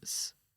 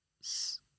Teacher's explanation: my one is like a slightly lazy tongue where the S sound will escape from the sides. But then if I really concentrate on pushing the air out from the back of the front teeth, so instead of saying S, I say S.